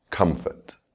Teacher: You can hear the stress on the first syllable